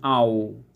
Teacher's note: ওয়াও এ হরফ উচ্চারণে দুই ঠোঁটে সরাসরি মিলিত হয় না, বরং উভয় ঠোঁট ডান ও বাম পাশ থেকে গোল হয়ে অর্ধফুটা ফুলের মতো মধ্যস্থলে ছিদ্র রেখে উচ্চারিত হয়